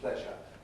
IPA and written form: ˈpleʒə (pleasure)